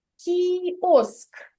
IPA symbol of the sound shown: кʼ